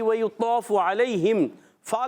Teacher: اوپر کے دانتوں کے کنارے سے اور نچلے ہونٹ کے تر حصے سے۔ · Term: فا کا مخرج